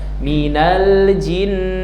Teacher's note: ketika menahan nun sukun bibirnya jangan jangan rapat minal jin ya bibir atas bawah terbuka minal jin jadi bukan minal jin jin jinan nanti kalau ditempel jadi mim jim gitu.